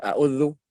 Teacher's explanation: ujung lidah kita ujung lidah nih bertemu dengan ujung gigi seri yang atas sini ya bukan dibawahnya